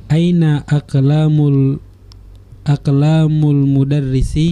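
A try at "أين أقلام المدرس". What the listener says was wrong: Betul.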